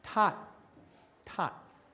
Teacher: You're starting out with a stop, you're stopped, and you're just going to that O, and you're stopping again. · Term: stop consonants